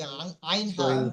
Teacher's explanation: আইন হা, কণ্ঠনালীর মাঝখান হতে উচ্চারণ হয়।